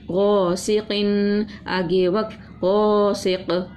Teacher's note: الف مدہ تھا ایک الف کے برابر کھینچا، زیر تھا نرمی سے پڑھا، دو زیر تھی غنہ کر کے پڑھا اور قلقلہ بھی کیا